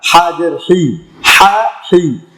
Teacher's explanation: এটা হচ্ছে হা, এটা হচ্ছে হলকের শুরু হইতে হা, আর এটা হচ্ছে হলকের মধ্যখান থেকে হা। এটা চিবিয়ে উচ্চারণ করতে হবে। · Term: বড় হা